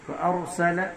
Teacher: را کے اوپر جزم ہے اور را سے پہلے زبر ہے، اس لیے را یہاں پر بھی پر ہوگی